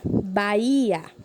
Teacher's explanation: Ela é uma palavra paroxítona, certo? Pois a sua penúltima sílaba é a sílaba mais forte